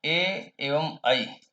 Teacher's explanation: ए एवं ऐ इनका उच्चारण स्थान कंठ और तालु है।